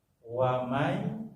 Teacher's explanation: wamai masuk ke ya nun mati, cara membacanya dilebur masuk ke ya, namanya idgham ya Pak, idgham gunah.